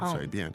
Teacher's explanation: So 随便, second tone and fourth tone